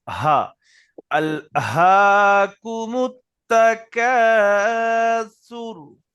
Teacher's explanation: এখানে হাটা গলার শুরু থেকে উচ্চারণ হয়, আমরা সবাই জানি, একদম এই গলার এখান থেকে একদম গলার শুরু যে নরম মাংস।